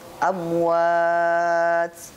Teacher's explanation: Lafaz amwat di sini asalnya mad tabi'i 2 harokat. karena diwakafkan, maka di sini bacaannya jadi mad arid li sukun. Maksimal bacaannya 5 sampai 6 harokat.